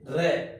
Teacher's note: र से रस्सी है वो प्र कंपित या लुंठित वर्ण माना जाता है